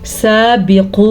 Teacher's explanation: इसको अलिफ मद्दा कहते हैं। आपने इसको खींच के पढ़ना है और यहाँ पे जो आपको मद नज़र आ रही है ये मद 3 अलिफ के बराबर है।